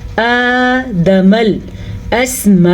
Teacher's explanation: پھر سے مد کا دھیان رکھنا ہے. اس مد کو 5 حرکات عربیہ کے برابر، دوسرے الفاظ میں اس کو 4 سیکنڈ تک لمبا کرنا ہے